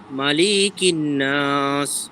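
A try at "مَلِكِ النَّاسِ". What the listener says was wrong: মালিকিন নাস, টান হবে না তো, লামে টান নাই তো, মালিকিন নাস,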